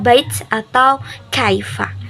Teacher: kalau fathah ketemu huruf ya, itu menghasilkan bunyi rangkap ai